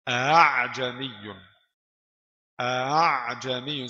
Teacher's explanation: tashil itu baca hamzah yang kedua ganti ke di antara hamzah dan alif